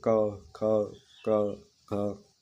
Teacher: प्रयत्न के स्थान के आधार पर कंठक व्यंजन। जिन व्यंजनों ध्वनियों के उच्चारण में जिह्वा पिछले भाग कंठ को स्पर्श होता है, वो कहलाती है।